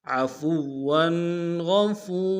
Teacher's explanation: کے امتداد میں کھینچیں گے، را کو تنوین غنہ کریں گے، عفورا وقت میں را کی تنوین کو الف سے بدل دیں گے